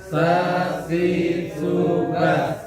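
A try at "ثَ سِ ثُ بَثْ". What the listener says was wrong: Iya, bukan sa, si, su, bas. Jadi harus tetap konsisten ujung lidah dalam kondisi apapun. Ujung lidah harus tetap menyentuh ujung gigi. Dalam kondisi apapun, mau dalam keadaan sukun, mau dalam keadaan berharokat, ujung lidah tetap harus menyentuh ujung gigi.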